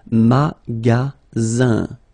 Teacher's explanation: the ending here is IN, so it's nasal, it goes in your nose, and it's un.